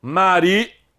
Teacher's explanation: Maria, sílaba tônica é o I, não tem acento.